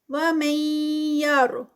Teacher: نون ساکنہ اور یا اس کے بعد تو ادغام ہے ود غنہ. وَمَن يَرْ، را ہیوی، غین ہیوی.